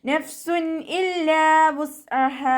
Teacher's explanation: തെൻവീനിന് ശേഷം ഇൽഹാറിൻ്റെ ലെറ്റർ ആയിട്ടുള്ള ഹംസ വന്നു. തെൻവീനിലുള്ള നൂനിൻ്റെ സൗണ്ടിനെ വ്യക്തമായിട്ട് കേൾപ്പിക്കുക, മണിക്കാതെ ഓതുക